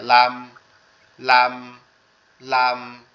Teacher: আর এটার উচ্চারণের স্থানটাও একবারে সহজ, জিহ্বার আগা উপরের তালুর সঙ্গে লাগায়